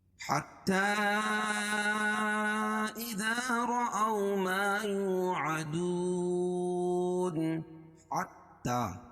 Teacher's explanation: حتى حا کو تا میں سختی کے ساتھ ملائیں، کیونکہ تا کے اوپر تشدید ہے، تشدید والا حرف 2 مرتبہ پڑھا جاتا ہے اور سختی کے ساتھ۔ حتى إذا دونوں الگ الگ کلمے ہیں تو یہاں مد منفصل ہوگا، اس میں توسط ہے اور قصر بھی جائز ہے۔